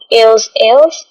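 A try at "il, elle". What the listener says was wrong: You don't have to say ils, els, just say il, el. It is same as this. Il, el.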